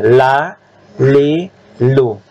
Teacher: Ujung tepi dengan posisi gusi. Jangan ke gigi. Jangan lah, itu gigi. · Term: huruf la